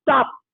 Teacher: when you say stop your lips remain closed and you don't release it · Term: unreleased